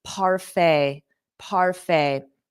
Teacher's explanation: notice that pronunciation the t is not pronounced so it ends on a f a parfait parfait you may